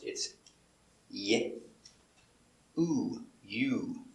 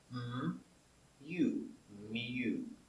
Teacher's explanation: Remember, the sound U is two sounds. It's y, oo, you.